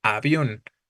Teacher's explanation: Avión es también aguda, su sílaba tónica es la última, esta sí termina en una de las que se mencionan, en este caso en N, por eso sí lleva acento.